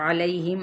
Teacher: عین کو وسط خلق سے ادا کریں